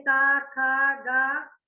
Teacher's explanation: कंठ पर का वर्ग के उच्चारण हम करें, का खा गा, तो उच्चारण करके देखिए, हमारा जो है आवाज जो है कंठ से टकरा के बाहर आ रही है ना, का खा गा बोल रहे हैं, तो ये ध्वनि हमारे कंठ से टकराकर बाहर आ रही है, कंठ यानी गले से।